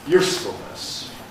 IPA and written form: ˈjuː(clipped)sfl̩nəs (usefulness)